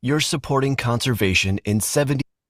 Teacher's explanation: That's someone who's pausing before words that begin with vowels. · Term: glottal stop